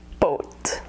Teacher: the thing you should know about the English pronunciation in America is the W sound at the end of O